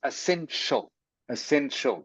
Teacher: a sh sound like sh okay so it is essential essential This Ti is pronounced like sh